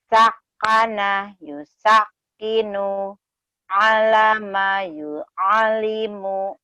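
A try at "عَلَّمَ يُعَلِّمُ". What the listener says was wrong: Allama yu'allimu. Teteh di sini nyambernya sedikit lambat ya. Coba cepetin teh. Allama yu'allimu.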